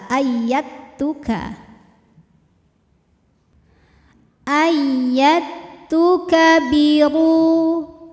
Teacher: mutajanisain sebab ada Dal sukun menghadapi huruf Ta Maka cara bacanya Dal dileburkan ke ta tanpa meninggalkan sifat apapun dari huruf Dal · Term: idgham mutajanisain